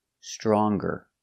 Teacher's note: Again, you make the nasal sound, strong, not strong, but strong. If I change strong with er and compare and say stronger, then we pronounce the g.